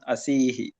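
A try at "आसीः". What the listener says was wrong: ఆ దీర్ఘం ఆసీహి, ఆసీత్ ఆసీహి అలా గుర్తుపెట్టుకోండి, రెండు ఆనే. అస్తి ఆసీత్ ప్రథమ పురుషం, అసి ఆసీహి ఇది మధ్యమ పురుషం.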